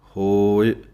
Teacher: ਹਾਏ ਹੋੜਾ ਲੰਮਾ ਬੋਲਣਾ ਹੈ। ਈੜੀ ਸਿਹਾਰੀ ਦੀ ਆਵਾਜ਼ ਥੋੜ੍ਹੀ ਹੈ।